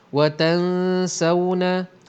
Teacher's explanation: Wa tansawna, nun mati bertemu dengan sin, hukumnya ialah ikhfa hakiki. Bunyinya bercampur antara nun mati dengan bunyi sin.